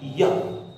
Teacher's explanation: य इसमें जीभ आपकी लगती नहीं है, लेकिन य बीच में रहती है